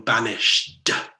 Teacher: there's enough emphasis on that D, that consonant, that it's an extra syllable almost.